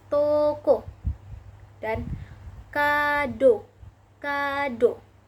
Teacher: O dengan madya atas belakang dengan kondisi mulut semi tertutup